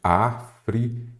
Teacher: Então, aqui eu tenho África. Então, você observa que aqui a sílaba tônica é a antepenúltima. Se ela é a antepenúltima, ela é uma proparoxítona.